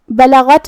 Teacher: غین کو ہم حلق کے اوپر والے حصے سے ادا کریں گے. غین حروف التفخیم میں سے بھی ہے تو ہمیں یہ حرف کو بھاری آواز میں ادا کرنا ہے. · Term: حرف الغین